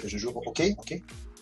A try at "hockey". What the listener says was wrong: On juste prononce pas le H, mais c'est ok.